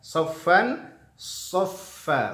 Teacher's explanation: sofnya tebal, fa-nya tipis